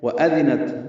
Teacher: واو حمزہ جلدی پڑھیں گے، دال نرمی سے پڑھیں گے، تا ساکن پہ ہمس ہے